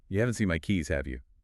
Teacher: Here, your voice goes up at the end. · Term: rising tone